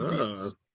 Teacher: with a B sound instead of a P and no A sound at the end